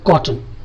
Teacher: T and N ఈ combination వచ్చినప్పుడు కూడా దీన్ని సిలబిక్ కాన్సనెంట్ అంటారు. బటన్, T and N syllabic consonant.